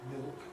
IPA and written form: mɪɫk (milk)